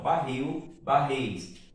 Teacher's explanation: a sílaba tônica é a última sílaba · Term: palavra oxítona